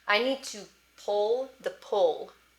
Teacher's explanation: The dark L can make the vowel directly in front of it sound a little wonky